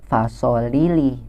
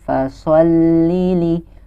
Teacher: Jadi seakan-akan huruf lamnya itu double. Ada lam yang sukun terlebih dahulu, baru lam yang kasrah. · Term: huruf yang bertasydid